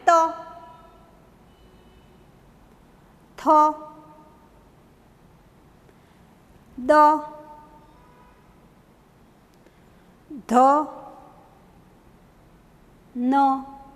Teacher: દંત્ય એટલે કે દાંત. દાંત જીભને સ્પર્શે છે અને પછી ઉચ્ચારણ થાય છે. તો તમે જુઓ જીભ છે ને દાંતને અડે છે.